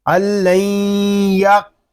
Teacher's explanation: یہاں قاف پر کریں گے، قاف ساکن ہے اس میں کلکلا بھی کریں گے، اس کو اللین یق اس طرح نہیں پڑھیں گے، قاف ساکن میں کلکلا خوب ظاہر کریں گے